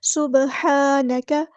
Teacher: قالوا سبحانک، سین میں سیٹی واضح کریں گے، با میں قلقلہ آئے گا، ہا کو مستحلق سے ادا کریں گے، ہا پہ کھڑا زبر ہے تو ایک الف کے برابر لمبا کریں گے۔ سبحانک، کاف باریک ادا کریں گے اور کاف کی زبر کو لمبا نہیں کریں گے۔